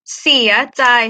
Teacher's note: เสีย is one rising tone